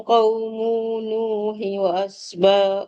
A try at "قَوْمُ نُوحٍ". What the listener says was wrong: قوم نو jangan tak dia tak ada dengung dekat mu tu كذبت قبلهم قوم نوح قوم نو bukan قوم نو mu nu ada dekat situ Nu tu pun tak panjang. Nu tak panjang.